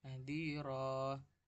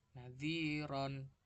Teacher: Contohnya ya, di sini ada nadhiron, tulisannya nadhiron tanwin gitu, tapi bacanya itu nadhiro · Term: Mat iwad